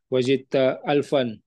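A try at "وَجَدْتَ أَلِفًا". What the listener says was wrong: alifan bukan alfan setelah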